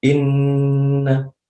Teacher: ketukannya sekitar dua sampai tiga ketukan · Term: ghunnah musyaddadah